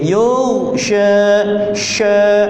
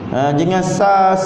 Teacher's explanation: huruf shin tafashi, pertengahan lidah sha. Jangan sa kan.